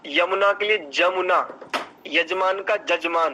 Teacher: तो या के स्थान में जा का उच्चारण